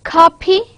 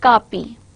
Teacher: pronounced in nearly the same way, except that one word will have an aspirated sound, whereas the other word it would be non-aspirated one